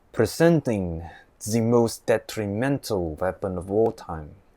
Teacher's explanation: the Russian accent with the long gargle R sound